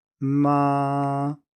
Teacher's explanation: you think that the first tone is really high and really long